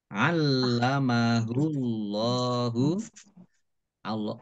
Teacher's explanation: Kemudian Allahnya dibaca tebal karena harokat di depannya dhammah